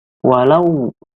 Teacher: itu huruf wawu sebelumnya horse yang bakar roket Fatah itu namanya Mad layyin dibacanya panjang dua harakat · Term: mad layin